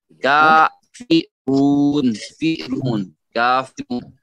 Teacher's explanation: الکافرون، کافرون میں جو ہے کاف، وہ قاف والا نہیں ہوگا، یہ والا قاف نہیں ہوگا، یہ کاف ہے، کاف، اور حرف مدہ میں سے ہے الف مد نے، تو کا ہوگا اچھی طرح، کافرون، فیرون، کافرون، رون میں سے جو رو ہے، رو اس میں موٹا اور ہونٹ کو گول کیجئے، یہ واو مدہ ہے